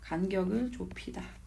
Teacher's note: 비읍하고 히읗하고 만나니까 피읍이 되고, 디귿하고 히읗이 만나니까 티읕 되고, 기역하고 히읗이 만나니까 키읔 되고, 지읒하고 히읗이 만나니까 치읒 되더라.